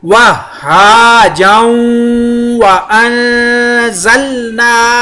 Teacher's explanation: نون کے اوپر اخفا کیا کیونکہ زا اخفا کا ہے